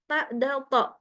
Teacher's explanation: huruf-huruf yang keluar dari ujung lidah bertemu dengan gusi atas